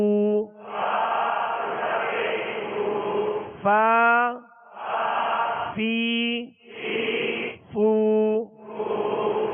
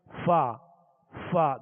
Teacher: فا کا مخرج یہ ہے کہ اوپر کے سامنے والے دو دانت جو ہیں دونوں دانتوں کے کنارے اور نچلے ہونٹ کا تر حصہ، اوپر کے یہ دونوں دانتوں کے کنارے اور نچلے ہونٹ کا تر حصہ، اس سے فا ادا ہوتا ہے.